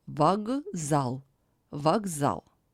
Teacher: the vowel O is not under stress, That's why it is pronounced as A.